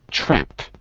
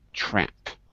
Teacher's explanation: I'm using American English, so the A is not very closed. It's not very open. It's a little bit closed.